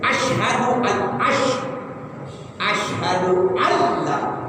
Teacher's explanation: Jadi nggak pakai didengungin, tapi nunnya nggak boleh dibaca. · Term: Idgham bila guna